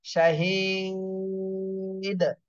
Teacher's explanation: দালে সাকিন হলে দাল কলকলা করতে হবে